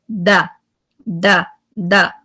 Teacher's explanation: एक तो आप जब द कह रहे हैं आपकी आवाज जो है वो स्ट्रॉन्ग और हाई हो रही है, द द। दूसरा आप आवाज अपना सांस भी तोड़ेंगे, द, आपको कंटिन्यू रखने की जरूरत नहीं है